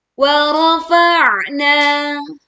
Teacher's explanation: Kita tekan huruf ain sukun dengan menyempitkan pita suaranya dan suara terdengar lebih berat